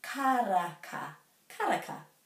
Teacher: And the ra is rolled.